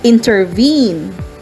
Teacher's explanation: two unstressed syllables are followed by a stressed syllable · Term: anapestic, anapestic meter